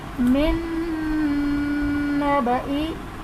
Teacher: نون ساکن کے بعد حروف یرملون میں سے نون آ رہا ہے، تو یہاں پر ادغام مع الغنہ کا قاعدہ بنے گا۔